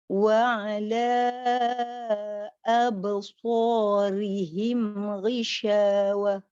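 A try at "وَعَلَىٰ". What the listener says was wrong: Cuma tadi pada ala tadi cukupkan 4 ya.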